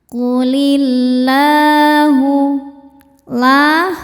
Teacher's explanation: Qulillahu la hukumnya mad thobi'i muqaddar. Karena lam berharakat fathah panjang. Cara bacanya dipanjangkan dua harakat.